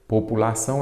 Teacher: O tio não é acento gráfico. A sílaba forte, no caso, é a última, ela é uma oxítona terminada em ditom.